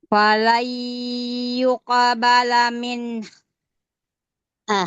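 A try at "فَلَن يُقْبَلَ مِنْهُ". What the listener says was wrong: h-nya h-nya itu makhrajnya belum kena makhraj ha belum kena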